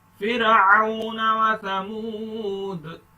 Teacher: دال پر کلکلا کریں, سٹاپ کریں گے.